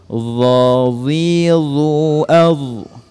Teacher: huruf dha ini mempunyai sifat isti'la, sifat menebal dengan cara memoncongkan bibir kita.